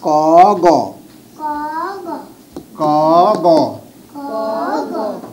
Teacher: এক এবং তিন হচ্ছে যে অল্প প্রাণ